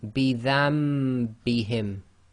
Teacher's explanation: The Noon Sakin sound is changing to the meme Sakin sound. Noon here is in grey, indicates it is not pronounced, and that the color coding depends on which Quran you're looking at. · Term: Iqlaab